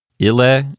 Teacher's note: Ile is a two-syllable word, so the accent automatically goes to the first syllable. Remember that in Latin, the final syllable of a word will not receive a stress accent.